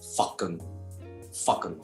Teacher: ¿Vieron cómo esta A ya no es A, sino es O?